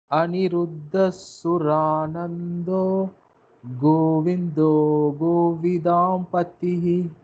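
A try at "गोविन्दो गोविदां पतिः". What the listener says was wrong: Govindo was too fast. You're saying Govindo, Govindo, Govind. That in deserves more time. Govindo, Govidampatihi.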